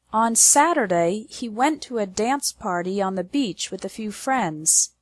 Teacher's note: the stress is on the words Saturday went dance party Beach and friends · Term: strong words